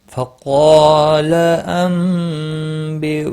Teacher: فقال، قاف اور الف دونوں پر پڑے جائیں گے، قاف مستعلیہ ہے اور اس کے ساتھ میں الف بھی آیا ہے، یہ بھی پور پڑا جائے گا۔ نون ساکن کے بعد متحرک با آیا ہے، یہاں پر قلب ہوگا، اخفاء شفی ہوگا۔ بیونی، او واو مدہ ہے، نی یا مدہ ہے، ایک ایک الف کے برابر کھینچ کر پڑھیں گے۔